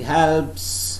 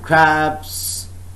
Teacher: when you say helps, there is no vibration at all. But when you say crabs, you can feel vibrations so far as the Adam's apple is concerned. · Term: voiceless